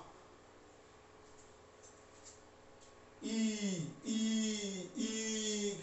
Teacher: ई कहने से ऊपर वायु जाता है तालु की ओर, ई ज्यादा स्पष्ट हो जाता है च वर्ग के उच्चारण से। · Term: तालव्य